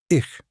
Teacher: After E, I, or any umlaut, it's a soft hiss, like a cat. · soft ich is not esh. Don't say ish. It's softer, airier, almost breathy.